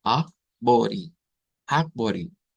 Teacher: la E en este caso se convierte en una I.